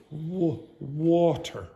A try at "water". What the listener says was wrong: Okay, now the pronunciation of the vowel sound is a little different too, but it's correct with the w sound.